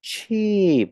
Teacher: gần giọng xuống nhưng kéo dài ra